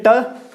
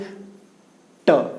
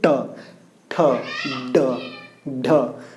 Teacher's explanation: ये जीभ जो है ऊपर जाएगा दांत के जस्ट पीछे वाला पार्ट, और वहां पे ऐसे उल्टा होकर के वहीं पे वायु को रोक लेगी, उसके बाद वो बाहर से ट, देखिए यहीं पे आकर रुक रही है, ट, ठ, ड, ढ, कुछ भी बोलिए, ण, तो सभी में क्या हो रहा है, ये वहीं पे रुक रही है, उसके बाद ये बाहर आ रही है। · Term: मूर्धा